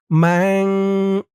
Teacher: গুন্নাটা নাকের ভিতরে লুকিয়ে করতে হবে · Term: ইকফা গুন্নাহ